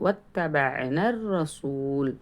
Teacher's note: வத்தபஅன, தாவில் தஸ்தீத் இருக்குது, இந்த இடத்துல அழுத்தம் கொடுக்கணும். தப, ஐன் சொல்லும்போது ஐனை தொண்டையில் தபனா அப்படின்னு சொல்லாமல் அந்த ஐனை நடுத்தொண்டையிலிருந்து உச்சரிக்கணும்